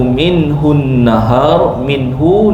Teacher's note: nun mati bertemu dengan ha izhar halqi. Ya. Ha jelas.